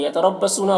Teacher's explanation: रौ को पुर पढ़ेंगे, सौद को पुर पढ़ेंगे, वाव मद्दा है, इसे एक अलिफ के बराबर खींचेंगे।